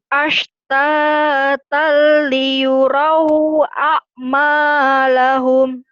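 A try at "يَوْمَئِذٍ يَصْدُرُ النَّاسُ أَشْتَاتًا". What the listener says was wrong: Yauma idiyas. Tadi sodnya masih bosin ya. Jangan ke sin tapi ke sod. Yauma idiyas durun nasu ashtatan liyurau alif dan ain.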